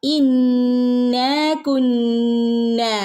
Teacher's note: മദ്ദും ഉണ്ട് അല്ലെ അപ്പൊ നമ്മൾ ഇന്ന കുന്ന പെട്ടെന്ന് ഓതി പോകരുത് കേട്ടോ ഇന്ന കുന്ന രണ്ട് ഹറക്കത്ത് നീട്ടുകയും വേണം നന്നായി ഒന്ന് മണിക്കുകയും വേണം ട്ടോ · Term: ശദ്ദും ഉണ്ട് മദ്ദും